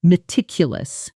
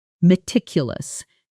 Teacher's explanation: The stress falls on the second syllable.